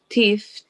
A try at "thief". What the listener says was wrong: Fear made the thief tremble. Thief. So, thief, that TH word, where your tongue goes between your teeth, like this is teeth, thief, thief. say thief.